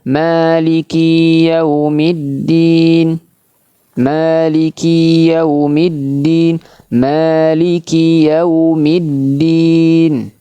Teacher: Dan jangan sampai kafnya dipanjangkan. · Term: huruf kaf